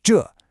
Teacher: It's a sharp falling fourth tone. Think of a command like stop.